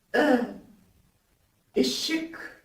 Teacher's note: Alors, ce I ne se prononce pas I. Il se prononce entre le I et le U. Il se prononce E.